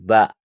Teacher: ini juga termasuk huruf Qalqalah yaitu bak coba begitu memantul